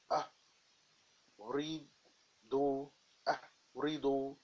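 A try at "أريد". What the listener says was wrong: There is no dhamma at the end.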